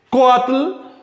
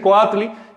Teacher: Si digo coatl, el acento recae sobre la o. Pero si le añado esa i del sufijo tli, tendría que decir coatli y el acento se traslada y entonces aumenta una sílaba la palabra.